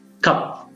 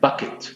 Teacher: We have some puff of air produced with the sound k, velar k. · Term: aspirated